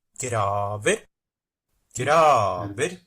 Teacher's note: the pitch contour that's quite different with a very late peak in the one instance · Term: accent 1 and an accent 2